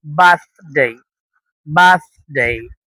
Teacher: জিহ্বার মাথাটা উপরে দাঁতের সাথে লাগাতে হবে